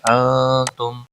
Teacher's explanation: نون ساکن کے بعد حروف اخفا کا حرف آیا ہے. نون ساکن پر اخفا ہوگا. اس اخفا کو اخفا حقیقی کہتے ہیں.